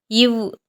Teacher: மேல்வாய் பல்லை கீழ் உதடு பொருந்துவதால் பிறக்கிறது